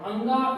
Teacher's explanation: अंगा एक ऐसा है इस वर्ग में जिसका कंठ के साथ साथ हम नाक का प्रयोग भी करते हैं, अर्थात नासिक का भी हम प्रयोग करते हैं, उसको उपयोग में लाते हैं। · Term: कंठ नासिक